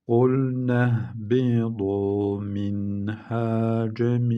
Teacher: Buradaki N'yi uzatmadan hemen H'ye cezimliyoruz. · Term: izhar